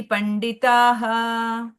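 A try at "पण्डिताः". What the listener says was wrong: ಪಂಡಿತಾಹ ಅಲ್ಲಿ ದೀರ್ಘ ಇದೆ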